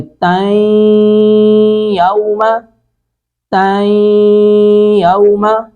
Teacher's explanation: اب تنوین کے متصلاً آگے والے لفظ کا پہلا حرف ہے یا حروف ادغام میں سے ہے، تو یہاں پہ ادغام کریں گے باغنہ، یعنی ادغام بھی کریں گے، ناک میں آواز بھی لے جائیں گے نون کی۔ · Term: ادغام باغنہ